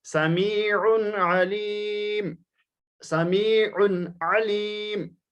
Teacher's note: یہاں عین پر تنوین ہے، تنوین کو ظاہر کر کے پڑھنا ہے کیونکہ اگلے کلمے میں عین آ رہا ہے